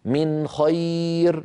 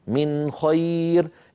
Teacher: هذا النطق الذي نطقته الآن خطأ في كل القراءات، اللهم إلا في قراءة أبي جعفر يزيد بن القعقاع رحمه الله. من خير، لابد من إظهار النون عند الخاء، من خير. إخفاؤها يكون هكذا، من خير.